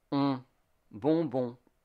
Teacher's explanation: And on is the nasal vowel of O. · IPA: ɔ̃